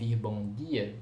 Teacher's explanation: uma variante oclusiva, não palatalizada, que em si diz ao falante carioca que a pessoa que está falando com ele não é do Rio de Janeiro